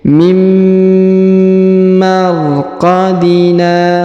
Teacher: Huruf nun sukun bertemu mim, maka huruf nunnya melebur ke huruf mim ya, ditahan dan ditekan 2 harokat mim, jadi tidak dibaca lagi nunnya karena sudah melebur ke huruf mim.